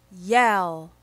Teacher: at the beginning of the Y sound your lips are open and wide let's practice each sound and the sounds that are easily confused